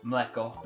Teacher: it just is ML instead of M vowel L. So the second consonant is in the onset, not the coda. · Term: consonant cluster